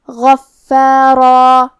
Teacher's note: راء پہ تنوین زبر ہے اور اس کے بعد الف ہے اگر ہم یہ آیت پہ رکیں گے تو مد الف سے رکیں گے تو پھر حرف الراء کو اور مد الف کو دونوں کو تفخیم سے پڑھیں گے